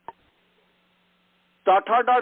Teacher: जिह्वोपाग्र या जिह्वाग्राध मूर्धा को पूर्ण रूप से स्पर्श करता है, छूता है। और ऐसे ही जिह्वाग्र वह तथन यह इसमें जो है उसको दांत को पूर्ण रूप से छूता है।